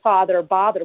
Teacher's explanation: for all of you in Chicago would be merged so you'd say father bother with the same vowel